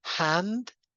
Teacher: the vowel in the word hand is slightly nasalized. And remember for the N we lower the veum and in English you start lowering the veum relatively early. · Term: nasalization